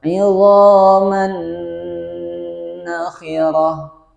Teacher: Kita ancang-ancang ke huruf nun, kemudian ditahan selama 2 harokat. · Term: idgham bi gunnah